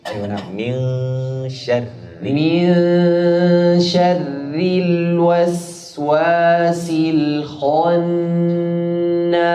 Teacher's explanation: khususnya min syarri tersembunyi antara nun dengan syin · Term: ikhfa